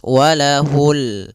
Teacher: alif lam qamariyah, yaitu alif lam yang ditulis dan dibaca, yaitu suara lamnya terbaca dengan jelas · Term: alif lam qamariah